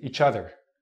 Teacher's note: a native speaker will take the CH sound with the O and mix it